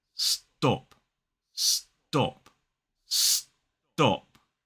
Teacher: when that unaspirated t sound comes after a s, it sounds more like a d.